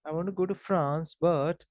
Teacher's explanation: I want to go to France, but the moment you say but, intonation falls. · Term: partial rise fall intonation